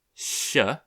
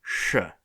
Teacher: So in Mandarin, there's I believe it's alveolo-palatal sound, which is sh, and then there's the retroflex sound sh.